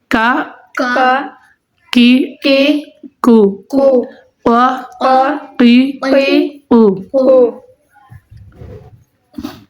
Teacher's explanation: اور اس نقطے والے قاف کو زبان کی جار اور تالو کے نرم حصہ سے ادا کریں گے